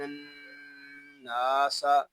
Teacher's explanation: آگے نون کو نون کے ساتھ ملا دیں گے، کیونکہ نون مشدد ہے، اور نون مشدد کو غننے کے ساتھ ادا کریں گے، کیونکہ نون مشدد میں ہمیشہ غنہ ہوتا ہے۔ آگے نون کو ایک الف تک کھینچ کر بھی پڑھیں گے، کیونکہ یہاں الف مدہ ہو رہا ہے · حمزہ ساکنہ میں جھٹکا ہوگا